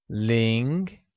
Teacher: Ling, pronounced in a mid-rising tone